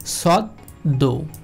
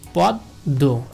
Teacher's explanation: এই দটা দুইবার উচ্চারিত হবে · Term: দ্বিত্ব উচ্চারণ